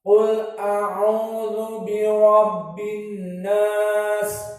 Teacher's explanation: qafnya di sini mufakhamah dan ra bi rabbi mufakhamah.